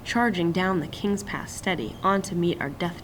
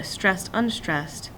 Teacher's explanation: the trochee stressed unstressed gives a feeling of pressing forward of more urgency